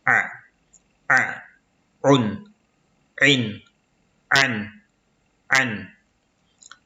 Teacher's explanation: le A, elle se prononce au milieu de la gorge.